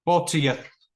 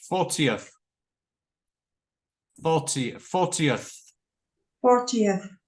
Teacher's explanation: Another tricky thing is that at the end, so you've got to get your tongue between the teeth.